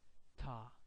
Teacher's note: light T, ta. No aspiration, not much aspiration. Ta. Tiet is a heavy aspiration.